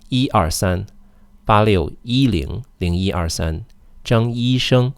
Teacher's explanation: when you have phone numbers, or when you're counting, or when you're saying names, E remains in the first tone.